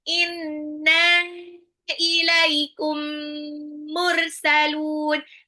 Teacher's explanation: mim sukun ketemu mim ditahan ya idgam mimi